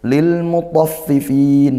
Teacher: Ini lam sukunnya izhar qamariyah. Lam takrif dibaca izhar jelas. Karena al bertemu huruf mim, huruf qamariah.